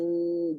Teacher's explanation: Ada sikit. Ada sikit bunyi nun. Maka nama dia ikhfa.